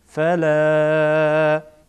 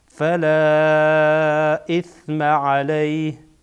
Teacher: این الف که اینجا میبینید این حرف مد و بعد از آن همزه آمده، سبب مد در دو کلمه مد منفصل میشه